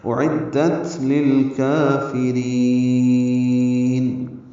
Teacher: لام ساکن پہ اظہار قمری ہے، کاف باریک پڑھیں گے، دو حلقات لمبا کریں گے، را باریک پڑھیں گے، لمبا کریں گے، نون ساکن پہ اظہار ہوگا اعدت للکافرین۔